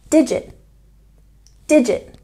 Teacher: there's a stress on the first syllable in digit